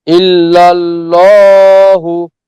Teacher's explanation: এখানে কিন্তু আল্লাহ শব্দ পুরো মোটা পড়েছে